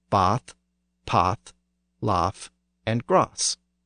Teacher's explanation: the ah sound of bath was a later development in the South